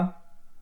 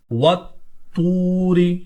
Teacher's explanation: طوا حرف قلقلہ میں موجود ہے، اس کو ہم جماؤ کے ساتھ پڑھیں گے